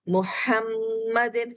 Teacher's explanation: پھر میم پر تشدید ہے، آپ کے ہونٹ میش ہو کر یہاں پر مکمل غنہ کرتے ہیں ون فنگر تک